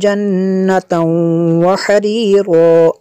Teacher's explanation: تنوین کے بعد واو حروف یرمالون میں سے یہاں پہ ادغام ہوگا، اس لیے یہاں پہ غنہ کریں گے۔